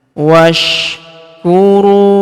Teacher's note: Huruf ru kita panjangkan 2 harokat karena waw sukun di depannya, alifnya tidak dibaca.